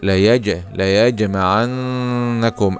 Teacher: هذه الكلمه فيها الجيم فيها حكم القلقله لان الجيم من حروف قطبه